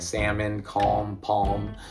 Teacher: English naturally drops the L in words like salmon, calm, palm